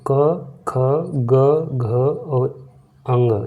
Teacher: देखो क वर्ग का जो उच्चारण स्थान है वो कंठ है।